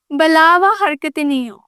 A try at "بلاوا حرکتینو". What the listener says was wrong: نہیں ہو نا تو آپ اردو میں بول رہی ہو. بلاوا حرکتینو. نو بلاوا حرکتینو.